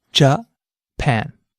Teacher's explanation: Notice how the pan part of the word stands out? That's because this syllable is stressed.